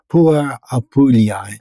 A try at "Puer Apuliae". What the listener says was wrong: Almost. So Puer Apuliae. Because the last two words are A and E, and those are Latin words, and in Latin, A and E are read E. You just don't pronounce the A.